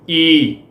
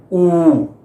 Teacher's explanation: ਈੜੀ ਨੂੰ ਵਿਹਾਰੀ ਈ, ਊੜੇ ਦੁਲੈਂਕੜ ਊ, ਇਹ ਉੱਚੇ ਸਵਰ ਨੇ। ਇਹਨਾਂ ਸਵਰਾਂ ਦੇ ਬੋਲਣ ਵੇਲੇ ਜੀਭ ਵੱਧ ਤੋਂ ਵੱਧ ਉੱਪਰ ਉੱਠਦੀ ਆ